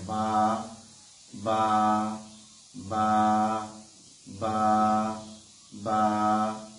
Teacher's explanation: বা হরফটি দুই ঠোঁটের ভেজা জায়গা থেকে বা বা বা বা বা এরকম ভাবে আদায় হবে।